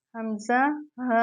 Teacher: حلق کا جو نیچے والا حصہ سینے کی جانب ہے وہاں سے ہم حمزہ اور ہا کو ادا کرتے ہیں